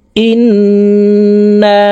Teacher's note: তাশদি নুনের সাথে তিন সেকেন্ড পরিমাণ গুন্নাহ করে ধরে রাখবো · ইন এখানে ওয়াজিব গুন্নাহ, হরকতের বামে নুনে মিমে তাসদিদ হইলে সর্ব অবস্থায় নাকের বাসি থেকে গুন্নাহ করিয়া পড়িতে হয়। তো এই হামজা তাসদিদওয়ালা নুনের সাথে 3 সেকেন্ড পরিমাণ গুন্নাহ করে ধরে রাখবো। তারপরে এই নুনকে আবার 3 আলিফ টেনে পড়ব, কারণ মদের হরফের উপরে চিকন চিহ্ন, বামে হামজা, মধ্যে মুনফাসিল 3 আলিফ টানিয়া পড়িতে হয়।